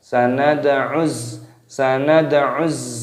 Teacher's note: Nunnya di sini dibaca fathah dan di sini ada huruf dal. Ini dibaca qalqalah, dipantulkan suaranya dalnya.